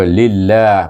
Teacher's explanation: oleh kerana lam tu baris bawah dalam nama allah ini iaitu kita baca dia dengan nipis